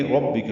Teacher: إِلَىٰ حمزہ اقصی حلق سے لام کو باریک پڑھیں گے، دو حرکات لمبا کریں گے، رَبِّكَ میں را پر پڑھیں گے، با سے ملائیں گے، با کو معروف اور جلدی پڑھیں گے، کاف باریک ہے جلدی پڑھیں گے